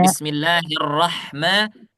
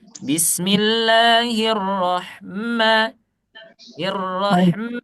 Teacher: Ma-nya jangan ada tasdidnya.